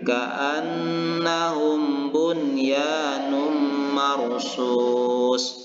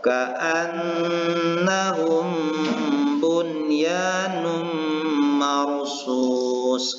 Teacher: membacakan bunyi nun yang berbaris sukun ini dengan jelas dan tidak berdengung atau dibaca izhar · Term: idgham ghairu kamil